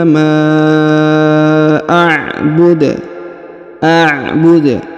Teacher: huruf Dal dipantulkan karena ber berada di ujung bacaan